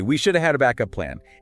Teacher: the K sound at the end of back doesn't just abruptly stop. Instead, it naturally transfers over to the beginning of up. Ah, making it sound almost as if backup is one continuous word, even though grammatically they are separate. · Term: linking